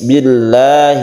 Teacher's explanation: adalah lamjalalah di lafdzul jalalah dibaca tarqiq atau tipis